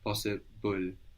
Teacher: When we say possible, we pronounce a vowel between the B and the L.